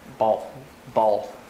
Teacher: It tends to be this dark L where the mouth is more closed and the L is harder to hear. It tends to be more common after vowels like ah, o, u, or maybe at the end of a word.